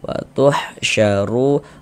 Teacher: Huruf ro kalau memiliki harakat dommah tadi dibaca apa? Dibaca tebal. Dibaca tabhim.